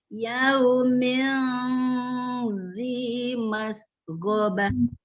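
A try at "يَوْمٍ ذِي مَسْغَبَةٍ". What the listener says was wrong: Ini sedikit mas ke go-nya nggak boleh putus dan go bukan mas go. Mas go.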